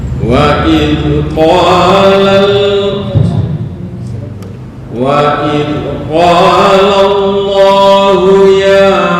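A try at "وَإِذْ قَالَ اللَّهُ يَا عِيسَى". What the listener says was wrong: Panjangan. Ini hanya dua harokat. Mungkin karena takut akhirnya dibaca remang-remang. Oke, yang pendek dibaca pendek, yang panjang dibaca panjang.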